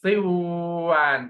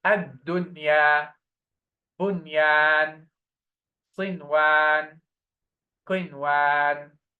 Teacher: When noon sukun is followed by a letter of idgham within the same word, what should we do? We pronounce clear noon sakinah, in this case without any merging.